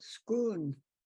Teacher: the L would turn into an N so instead of school it comes out scoon